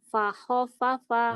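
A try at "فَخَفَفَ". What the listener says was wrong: Nggak ada yang panjang. Pendek semua. Fakhofafa. Fakhofafa.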